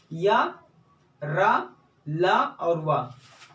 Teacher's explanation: इनका उच्चारण जीभ, तालु, दांत और ओठ, इन चारों के स्पर्श से, इन चारों के संयुक्त रूप से स्पर्श से इनका उच्चारण, सटने से इनका उच्चारण होता है, लेकिन कहीं भी ये पूर्ण रूप से सट नहीं पाते हैं। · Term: अंतस्थ व्यंजन